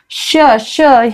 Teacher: श श हा जो श आहे षटकोनातला, थोडीशी जीभ वाकडी होते, मूर्धन्य आहे तो. स स जी पुढे येते, अशा पद्धतीने म्हणजे ह्याचे उच्चार आहेत श श स.